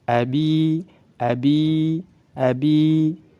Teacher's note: huruf ya sukun sebelumnya kasrah dihukumi mad tabi'i, dipanjangkan 2 harakat.